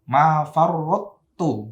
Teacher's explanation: Toknya melebur kepada tak.